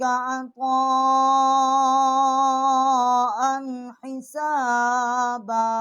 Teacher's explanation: یہاں ہم نے غنہ نہیں کیا، آگے حروف ہلکی ہے